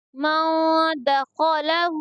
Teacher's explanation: यहाँ पर खा को पूर्व पढ़ेंगे, और हा के ऊपर उल्टा पेश है, इसलिए इसको थोड़ा खींच कर पढ़ेंगे।